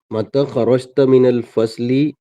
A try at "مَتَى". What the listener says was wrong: تھوڑا کھینچ کے پڑھیے. جیسا ہاضا ہے نا ویسا متا.